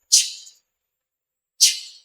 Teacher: there is complete closure and then there is a gradual release as the speech organs separate